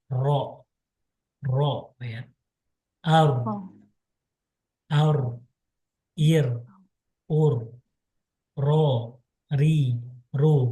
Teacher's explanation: Jadi ro itu cara mengucapnya dengan takrir mengulang ya.